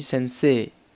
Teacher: Par contre, attention, on ne dit pas Sensei, on dit Sensei. C'est comme s'il y avait 2 accents aigus à la suite. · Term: prolongé